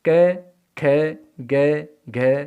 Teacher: तो अकुह विसर्जनीय नाम कंठ है अर्थात आकार ए या आ, क ख ग घ अंग है और विसर्ग, इनका उच्चारण स्थान होता है कंठ, इसलिए इन्हें कंठ्य वर्ण भी कहा जाता है। आकार, कैवर्ग, विसर्ग और है, तो इनका उच्चारण स्थान होता है कंठ, इसलिए इन्हें कंठ्य वर्ण कहा जाता है।